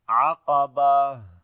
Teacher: تو ہا پڑھیں گے ہمس کے ساتھ، یعنی سانس جاری ہوگا · والے حصے سے پڑھیں گے، قاف کو موٹا پڑھیں گے، اور جب یہاں پر رکیں گے تو تا ہا بن جائے گی اور اس کے اوپر زبر بھی ختم ہو جائے گی ، اور یہاں پر ہا کے اوپر پھر جزم آ جائے